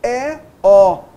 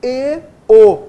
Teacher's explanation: E, O, nós abrimos mais os lábios, E, O, nós fechamos mais os lábios. Isso é o timbre aberto, o timbre fechado.